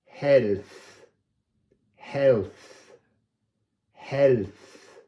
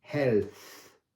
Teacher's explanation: here we have the unvoiced th